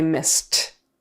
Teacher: The S is unvoiced, so the ed becomes a T, missed.